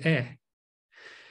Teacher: the tip of it is in the front part of your mouth and your mouth is midway open